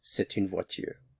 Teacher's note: Since a vowel follows, there's liaison here. So you'll hear the T sound when a vowel falls.